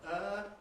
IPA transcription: ɜː